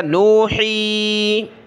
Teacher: وما أرسلنا قبلك إلا رجالا نوحی الیہم، لام کو نون کے ساتھ ملایا، رجالا نوحی، ہا گلے سے نکالا اور مد کی وجہ سے کھینچا